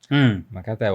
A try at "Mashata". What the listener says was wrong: Mashata. Is a Kikuyu name, so you don't say Makata, you say Mashata. Mashada.